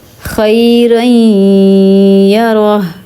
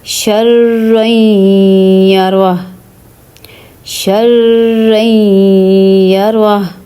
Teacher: میں نے غنہ کیا نا، ناک میں آواز نکالی ہے